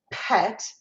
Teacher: So p, as in pet, we're using our lips as that stop plosive place for it to stop the air and then articulate the P.